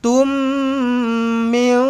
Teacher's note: Kalau jumpa dengan mim sabdu rapatkan terus bibir. Dengungkan dua harakat.